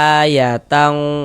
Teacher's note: Yang condong berbunyi huruf eng itu adalah ikhfa hakiki ab'ad, yakni ketika ada nun sukun atau tanwin bertemu dengan huruf qaf dan juga huruf kaf, seperti itu.